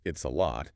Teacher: The tongue goes up to the T position, but the airflow is stopped, halted, before the sound is fully articulated. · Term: stopped T